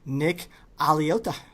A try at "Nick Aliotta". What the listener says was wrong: It's not Ollie. It's Allie. Not Ali. Allie.